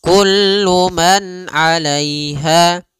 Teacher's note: Pada lafal di sini ada izhar halqi, yaitu suara nunnya dibaca dengan jelas ketika bertemu dengan huruf ain. Maka kita namakan dengan bacaan izhar, ya.